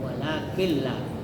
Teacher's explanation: Jangan walakin ya tapi walakilla dan tidak mendengung ya atau ditasdidkan itu huruf lam walaqillah.